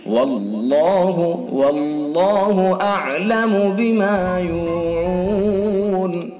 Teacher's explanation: اللہ کا لام پر پڑھا جاتا ہے، موٹا منہ بھر کے پڑھا جاتا ہے